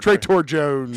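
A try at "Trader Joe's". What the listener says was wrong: Joe's, not Jones. I thought I heard Jones.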